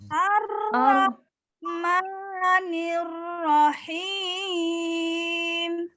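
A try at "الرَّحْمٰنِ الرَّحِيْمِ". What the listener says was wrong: Nah, ma-nya jangan terlalu panjang Bu, diayun aja. Ar-Rahmani.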